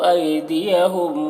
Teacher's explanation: ایدیہم میں یا لین ہے، اسے جلد پڑھنا ہے۔ ہم کے میم میں اظہار شفوی ہو رہا ہے۔